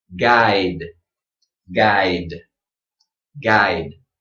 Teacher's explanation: make sure this final sound is strong but it doesn't receive a little schwa at the end